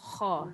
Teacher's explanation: pastikan kha tu keluar dekat hujung halqum